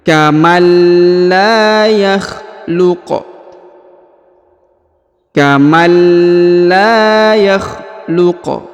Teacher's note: huruf la dipanjangkan dua harakat ya karena di depannya terdapat Alif